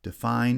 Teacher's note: Define has stress on the second syllable only, and the first syllable is unstressed.